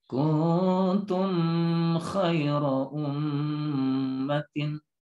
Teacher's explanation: Ini idhar syafawi, harus jelas juga, jangan ditahan-tahan